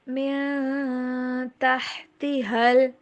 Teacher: یہاں پہ آواز کو نون کے اوپر ناک میں چھپائیں گے